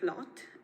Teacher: this open back vowel uh becomes unrounded uh like in general American